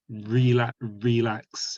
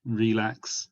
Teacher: for british people we often put our bottom lip against our top teeth